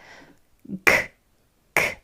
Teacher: The back of the tongue kicks off against the back of the throat. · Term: hard sound for C